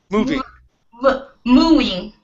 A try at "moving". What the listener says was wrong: Okay, almost. Hit that V. You're saying moving. You're almost there. Moving.